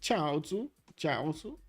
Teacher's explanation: Slight emphasis on the first syllable.